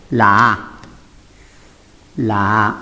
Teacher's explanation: la única vocal abierta, baja, central